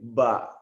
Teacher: Berarti dorongan energi itu keluar dan titik suara itu di bibir